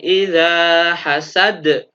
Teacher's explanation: Artinya harus dibaca memantul lebih tebal. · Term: qalqalah kubro